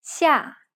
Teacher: line going from left to right it sounds like this yeah it sounds like a fast sharp drop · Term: falling tone